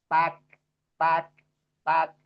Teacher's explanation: taknya jangan sampai mantul ya. Yang ada itu justru hamas · karena sifatnya nggak ada kol-kolah dia kaf itu nggak pakai kol-kolah. Tapi dia justru hamas.